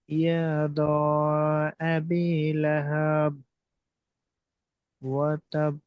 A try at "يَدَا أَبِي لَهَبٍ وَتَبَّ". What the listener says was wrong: ইয়াদা টান হবে, ইয়াদা টান হবে ভাই, ইয়াদা টান হবে।